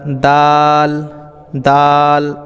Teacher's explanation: উপরের দাঁতের গোড়া দেখতে পাচ্ছেন এটা তো এটাকে আমরা দাল দাল একটু টেনে এক আলিফ পরিমাণমত টান দিয়ে আমরা দাল উচ্চারণ করব